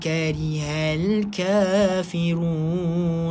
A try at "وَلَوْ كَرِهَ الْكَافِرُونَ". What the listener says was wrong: Huruf ka jaga, وَلَوْ Jangan baca وَلَوْ كَرِهَ الْكَافِرُونَ. Dia tak boleh baca ke, sebab ka, ka, ke, e, ka.